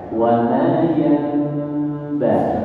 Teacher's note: Bibirnya nggak langsung rapat tapi diregangkan. Bibirnya diregangkan. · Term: mujafah